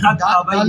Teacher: دال نہیں پڑا جائے گا، دال سائلنٹ ہو گیا